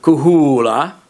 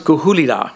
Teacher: So the verb kuhula, where that is a contrastive long vowel, there could also be a verb kuhula with a short vowel, becomes kuhulila. When I add the applicative suffix il, it's now anti-penultimate, so the vowel has to shorten.